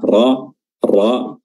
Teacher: rnya tebal ya karena berharakat fathah